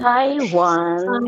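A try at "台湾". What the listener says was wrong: And the wrong tone. No, it's a second tone. Taiwan. Yeah, second tone. Taiwan. Taiwan, so it's aspirated and second tone.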